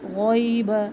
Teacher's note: غین موٹا حرف ہے، پر منہ بھر کے اس کو ادا کرے